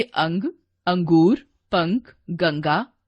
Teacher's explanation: अंग का उच्चारण नाक से होता है, इसे अनुस्वार कहते हैं। वर्ण के ऊपर बिंदु लगाकर इसे दर्शाया जाता है, जैसे अंग, अंगूर, पंख, गंगा आदि।